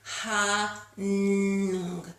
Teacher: that nung sound really vibrates inside of our skulls, rather than a hum, sound stays here in our lips.